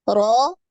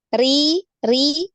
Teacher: Ro ini tebal, naik ya, pangkal lidah. Ri, ri ini tipis ya, tidak naik. Pangkal lidahnya tidak naik. Kemudian ru ini naik lagi.